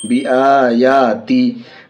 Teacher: ताज़ेर ती, ता के नीचे ज़ेर है, ज़ेर को जल्दी पढ़ेंगे, थोड़ा भी न खींचेंगे, ज़ेर की आवाज़ नीचे को जाती है।